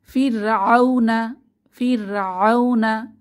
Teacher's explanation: এখানে র সুকুনের আগে জের আমাদের রকে পাতলা করে পড়তে হবে